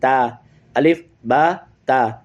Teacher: پشت زبان تالو کی طرف نہیں جائے گی، سمپل ادا ہوگی تے